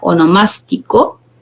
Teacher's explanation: la mayor fuerza de voz recae en la antepenúltima sílaba